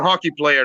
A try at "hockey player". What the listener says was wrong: It's hockey player, man. It's hockey. Goddamn, it's not honky player. Enunciate, bro. Enunciate.